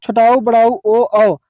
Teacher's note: वृत्तमुखी, जिन्हें बोलते समय होंठ गोल हो जाते हैं।